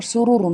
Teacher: سرورن میں سین ہے، سین میں سیٹی کی آواز نکلے گی